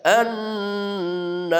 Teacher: rnya tebal tafkhim ya karena ada ro di akhir kata sebelumnya ada alif · karena ada ra di akhir kata, sebelumnya ada alif, sebelumnya berfathah, maka ra-nya dibaca tebal